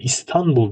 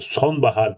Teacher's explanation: İstanbul derken buradaki n'yi m yapmıyoruz